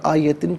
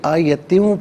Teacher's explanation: دو زیر کی تنوین کو واو کے ساتھ ملا کر واو کی آواز کو غننے کے ساتھ ادا کیا جائے گا، اور وقف کریں گے تو آیہ پڑھیں گے۔